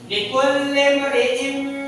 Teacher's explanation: Dengung itu udah ditahan dulu. Nah. Ditahan selama 2 harokat. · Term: idgham bi gunnah